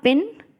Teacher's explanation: पिन में पी sound जो है उसमें आप हाथ लगा करके देख सकते हैं and you can feel नो vibrations. So it's merely that the air comes out through your mouth, ठीक है, पिन।